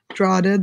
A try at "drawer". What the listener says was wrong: Drawer. Drawler? Why are you saying drawler? What else do you add the L to?